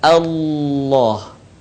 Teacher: Saya ingin mengingatkan, ketika kita melafalkan huruf lam pada lafzul jalalah atau lafaz Allah, maka huruf lam harus terdengar suaranya menebal dengan cara menutupkan bagian lisan ke langit-langit.